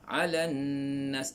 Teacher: nun ni wajib dengung, wajib al-ghunnah